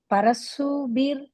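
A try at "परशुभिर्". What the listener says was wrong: Parashu sha sound parashubir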